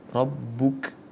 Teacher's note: ada seperti sebuah percikan karena sifatul hurufnya adalah hamas